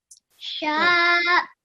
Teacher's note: a sheen with a vertical fatha will be 2 seconds long